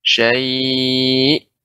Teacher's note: Jadi perlu diketahui bahwasanya nabar ya meninggikan suara dari yang lain ketika kita berhenti ada huruf hamzahnya